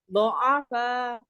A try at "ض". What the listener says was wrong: Mulutnya, coba Ibu, giginya, mulutnya ini, tidak monyong maksudnya, maaf. Do'afa.